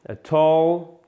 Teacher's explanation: C'est presque comme un A, mais ça tire aussi un peu sur le haut.